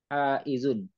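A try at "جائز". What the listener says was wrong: jaizun. Oh, kurang tuh, kurang kurang jim, kurang titik. Jaizun.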